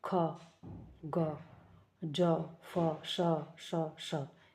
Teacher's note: वायु का जो मार्ग है वो नैरो हो जाता है और वायु घर्षण के साथ निकलती है, वो संघर्षी व्यंजन कहलाते हैं।